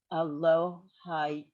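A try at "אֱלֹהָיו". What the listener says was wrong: Elohav in this case. Yeah, so this yud is silent actually, Elohav.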